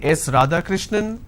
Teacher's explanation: when you are responding with a rising tone it doesn't sound like a statement · it goes on a rising tone now it doesn't come as an answer it comes as a guess or it comes as a question am I right is this